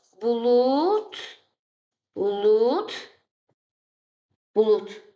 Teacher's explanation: Sonra samitlə başlayan şəkilçi qəbul etdiyinə görə d keçəcək onun kar qarşılığı olan t-ə. D kar qarşılığı olan T-ya keçir.